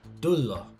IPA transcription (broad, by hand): ˈdulo